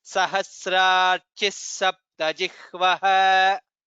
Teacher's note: So it becomes Sahasrarchis Saptajihvaha. Additional Sakara should come there.